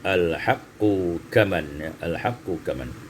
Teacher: Al-haqqu kaman, qaf dengan kaf dekat makhrajnya, ya. Tapi karena qaf itu bertasydid, maka tidak bisa dia diidghamkan dengan kaf, dibaca dengan izhar